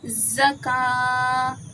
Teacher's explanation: کاف پہ کھڑا زبر ہے تو ہم نے ایک الف کی مقدار کھینچا